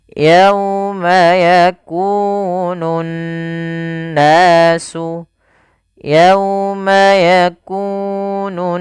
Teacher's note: Cara membacanya adalah menahan suara n ya sepanjang dua harakat. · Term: ghunah, gunnah